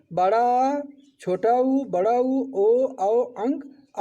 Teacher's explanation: जिन स्वरों के उच्चारण में जीभ का पश्च यानी कि पिछला भाग काम करता है उसे हम पश्च स्वर कहते हैं। जैसे बड़ा, छोटा ऊ, बड़ा ऊ, ओ, औ, अंग, आ, इनका उच्चारण जीभ के पिछले भाग से किया जाता है।